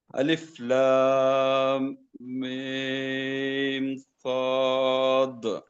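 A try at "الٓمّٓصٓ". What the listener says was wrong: جی آپ نے لام میم صاد تو صحیح پڑھا، لیکن غنہ نہیں کیا آپ نے. یعنی غنہ کا مطلب ہے لام اور میم سے پہلے، میم کو پڑھنے سے، لام کے بعد اور میم کو پڑھنے سے پہلے میم پر غنہ کرنا ہے، تھوڑی دیر آواز خیشوم میں رکھنی ہے.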